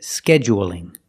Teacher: say scheduling with a stress on the first syllable scheduling or you can say scheduling and make it longer on the second syllable